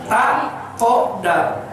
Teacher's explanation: Makhraj dal itu ujung lidah ke daging, ke gusi gigi depan.